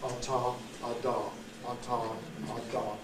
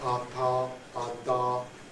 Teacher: on the alveolar ridge, not on the teeth here